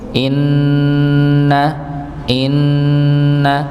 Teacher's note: Walaupun kalau kita kadang melihat untuk kaidahnya durasinya dua harakat begitu nggih. Tapi kalau dibandingkan dengan dua harakat panjang mad maka dia lebih panjang sedikit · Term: dengungnya